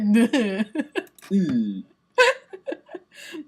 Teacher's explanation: It's central, close. Because it's, your tongue is high and it's in the middle of your mouth. Yeah, it's like, U.